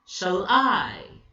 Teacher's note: Shall is unstressed, I is stressed.